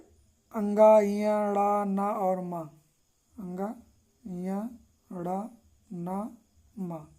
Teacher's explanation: इन पांचों वर्णों का उच्चारण स्थान नासिका है